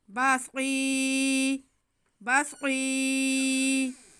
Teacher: ہم صاد کی آواز کو موٹا کرتے ہوئے تھوڑا سا کھینچ لیں گے